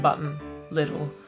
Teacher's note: The syllables are definitely pronounced instead of using a schwa that Australians tend to use, or more of an American sound tends to use.